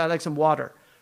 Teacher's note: we turn it into the ta into a da